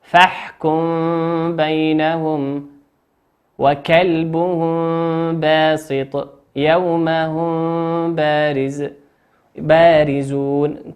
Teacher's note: والحكم الثالث وهو الإخفاء، يسمى إخفاء شفويا لخروج الميم الساكنة وحرفه من الشفتين، وسببها التجانس في المخرج والاشتراك في أكثر الصفات.